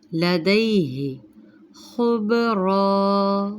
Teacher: خا مستعلیہ حرف ہے، با پر جزم، یہ بھی قلقلہ میں آتا ہے۔ · دال زبر یا دئی، لین کا قاعدہ ہے، جلدی پڑھیں گے۔